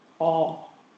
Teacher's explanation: In English, your back vowels tend to be rounded, like if I say all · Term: lip rounding